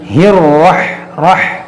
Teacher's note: اور یہاں پر دیکھیے را کو موٹا کریں گے، اس ہا کو را سے ملائیں گے، ہر رح رح را کو موٹا کر کے پڑھیں گے